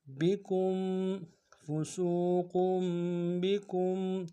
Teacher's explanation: کاف کو میم ساکن کے سامنے لانا ہے، میم ساکن میں غنہ کریں گے